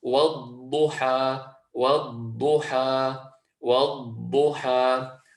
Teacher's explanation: we're wanting to hold our side of the tongue on the roof of the mouth to allow this pressure to come through, and we say, وَالضُّحَى وَالضُّحَى وَالضُّحَى. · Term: al-istitaala